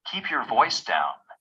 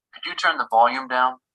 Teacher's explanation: when a phrasal verb has a noun object such as keep your voice down the noun usually has the main stress